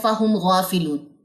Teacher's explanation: اظہار کریں گے. کسی قسم کا جو غنہ ہے یہاں پہ نہیں ہوگا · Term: اظہار شفوی